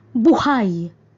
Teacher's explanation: bigkas mabilis at may diin sa ikalawang pantig